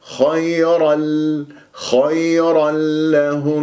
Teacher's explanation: اللام لما تصير مشدده ما اطيل جريان الصوت فيها حتى لا تصير رخوه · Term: ادغام بغير غنه, إدغام بغير غنة